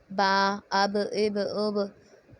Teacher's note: دونوں ہونٹوں کے تر حصے کے ملنے سے ادا ہو رہا ہے